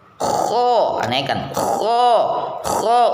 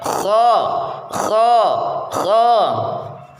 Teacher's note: Sedang ujung lidah bagian depan tetap merendah, infitah. Jadi pangkal lidahnya itu naik ya. Kho, naikkan. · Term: isti'la